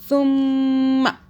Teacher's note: سا کو اپنے سافٹ پڑھنا ہے، سا کو زبان کو ہلکا سا باہر کیجئے، پھر ادا ہوگا ورنہ نہیں ہوگا